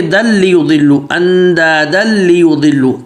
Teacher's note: اسی طریقے سے اندادن لیضلوا، یہ دن لیضلوا تھا، لیکن تنوین کے بعد لام آ گیا تو یہ دل لیضلوا، اندادن لیضلوا، تنوین بالکل مدغم ہو گیا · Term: ادغام کامل بلا غنہ